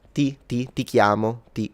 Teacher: It's like Italian has no aspiration.